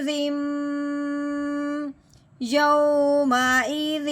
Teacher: اب جب بھی میم مشدد ہو تو اس پہ ہمیشہ غنہ کیا جاتا ہے۔ زال کو میم مشدد کے ساتھ ملاتے ہوئے ایک الف کے برابر لمبا غنہ کرنا ہے